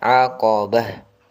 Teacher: Ta bila di akhir kalimat, ta yang bentuknya bundar ini namakan ta marbutah. Ketika dimatikan atau dibaca di akhir diganti dengan huruf ha yang sukun. Maka aqabah.